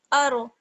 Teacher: را کو پر پڑھیں گے کیونکہ را ساکن سے پہلے زبر ہے